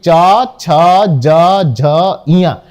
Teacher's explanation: तालु के द्वारा तालु जीभ फैल जाती है और तालु से जाके बैठ जाती है टच करके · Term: तालव्य